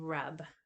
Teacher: and that is low mid, back central, lax, unrounded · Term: wedge